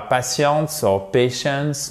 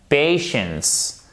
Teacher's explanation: Patients. Vous avez une diphtongue ici et votre accent tonique sur la première syllabe.